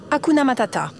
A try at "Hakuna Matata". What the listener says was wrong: Non, vraiment, t'y es pas du tout là. Écoute, donne-moi de l'enthousiasme, c'est ça que je veux. Voilà, de l'enthousiasme.